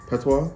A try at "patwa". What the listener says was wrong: So it's not don't draw it out. You make the first part of the word short and then you draw out the second half. You're just doing it as patois.